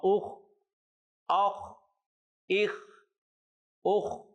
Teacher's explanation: اس کی ایک تو آواز موٹی ہوگی اور اس کو ابتدائے حلق یعنی حلق کے ابتدائی حصے سے ادا کرنا ضروری ہے